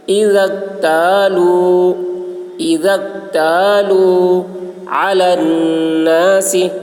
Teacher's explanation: عین حلق سے، نون مشدد غنہ ہوگا